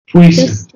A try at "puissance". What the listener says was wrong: No, not pui, but puissance.